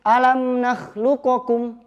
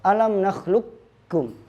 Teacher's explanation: Kita tidak baca qafnya, langsung ke kaf. Alam nakhluqukum. Ingat kaf tipis. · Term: idgham kamil